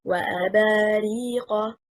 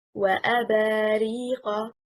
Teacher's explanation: stressing on حركة الباء, indicates that the word is not finished yet